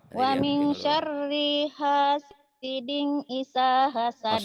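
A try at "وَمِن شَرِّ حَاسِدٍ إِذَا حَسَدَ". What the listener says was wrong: Astagfirullahaladzim, hiding mulu loh. Wa min syarri hasidin. Gak ada hiding. Gak ada hidingnya. Wa min syarri hasidin. Jangan hasiding. Ding dari mana?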